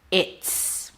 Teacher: The Z sound became an S because the T is voiceless. So it affected the Z sound of the is.